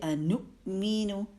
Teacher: واؤ کے اوپر حمزہ ہے اور حمزہ ساکن ادا ہو رہا ہے، یہاں پہ یہ واؤ نہیں پڑھا جا رہا